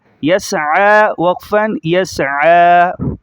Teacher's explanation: عین پر کھڑا زبر ہے، ایک الف کے بقدر کھینچا جائے گا اس کو، اور یا کو چھوڑ دیا جائے گا۔